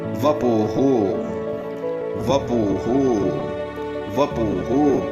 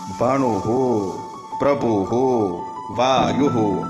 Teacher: તો વિસર્ગના સ્થાને બોલાશે હુ. વિસર્ગનો હ નહીં થાય, પરંતુ ઉ સ્વર પ્રમાણે વપુહુ આ પ્રમાણે બોલાશે.